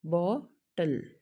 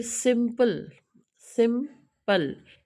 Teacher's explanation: लेकिन इसको मैं अभी आपको दूसरे तरह, फिर भी ये टू सिलेबल वर्ड है, क्यों, क्योंकि टल जो है वो के टी और एल के बीच में बिल्कुल स्पेस नहीं है बोलने के लिए, लेकिन फिर भी वो एक सिलेबिक यूनिट बनाता है